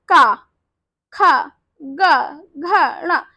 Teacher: कंठ से बोल रहे, गले से आवाज आ रही है। आप बोल के देखिए शब्द गले से आवाज आ रही, तो हम इसे कहते हैं कंठ ध्वनि।